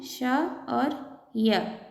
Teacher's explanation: श और य को तालव्य व्यंजन कहते हैं